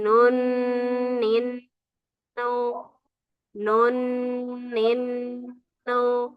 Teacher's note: ketika tasydid dia memiliki sifat gunnah, dengung ya, yang di khasyum, di rongga hidung